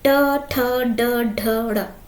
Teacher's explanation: यहीं पर हमारी प्राणवायु ज्योति का प्रेशर यानी दबाव सबसे अधिक पड़ता है मूर्धा पर, इसलिए इस टा वर्ग को हम मूर्धन्य व्यंजन कहते हैं